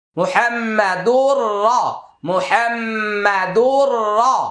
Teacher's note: তানউইনের পরে র আসছে ইদগামি বিলা গুন্না